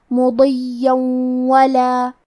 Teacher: واو حروف الادغام بغنہ میں سے ہے، ادغام کا معنی ہے حرف کو حرف میں داخل کرنا، تو ہم تنوین کو واو میں ملا کے غنہ اور تشدید کے ساتھ یہ حکم کو ادا کریں گے